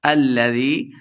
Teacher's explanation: یا مدہ ہے دو حرکات لمبا کر کے پڑھیں گے